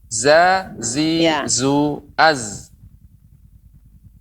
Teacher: Jadi huruf zai ya juga mengalir dalam arti dia desisnya ya seperti itu. Dia tajam.